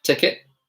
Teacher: in my British accent, I actually dropped the T. I dropped the T. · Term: glottal T